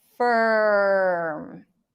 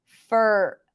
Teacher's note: you want to eliminate the vowel and transition from one consonant to the R as quickly as possible while ignoring the vowel sound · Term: stir